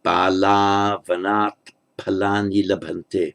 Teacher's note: the visarga at the end of bala drops because it's followed by the voice consonant v